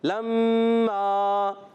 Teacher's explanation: لما, میم مشدد ایک الف کا غنہ, اور میم الف زبر ما, الف مدہ بھی ہے, ایک الف کھینچنا بھی ہے.